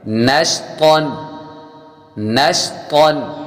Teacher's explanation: طا حروف مستعلیہ میں سے ہے، پر یعنی موٹا پڑھیں گے